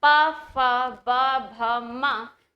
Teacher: और जब आप बोलेंगे प फ ब भ म, तो आप पाएंगे आपके होठ दोनों आपस में मिल रहे हैं, स्पर्श कर रहे हैं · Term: ओष्ठव्य वर्ण